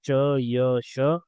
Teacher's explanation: जो तालु यानी पैलेट से निकलेंगे वो है च, य, श